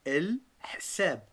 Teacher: avec le H qui est expiré au fond de la gorge